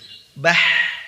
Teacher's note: ketika huruf H berharokat sukun, maka dialirkan suaranya. Jangan dipotong, jangan bah gitu.